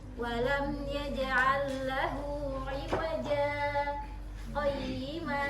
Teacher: Usahakan intonasinya jangan iwaja, tapi angkat.